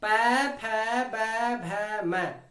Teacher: यदि हम ओष्ठ को बंद नहीं करेंगे, खुले रखेंगे, तो इन वर्णों को हम बोल नहीं सकते हैं। देखो पै वर्ग को हम बोल के देखते हैं, पै, फै, बै, भै, मै, यानी सभी वर्णों को बोलने में हमारे ओष्ठ आपस में स्पर्श करते हैं, इसलिए इन सभी वर्णों का उच्चारण स्थान ओष्ठ होगा।